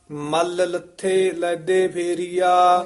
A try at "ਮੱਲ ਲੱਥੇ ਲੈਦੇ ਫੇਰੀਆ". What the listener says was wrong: ਇਹ ਮੱਲ ਕਸ ਕੇ ਬੋਲਣਾ ਹੈ।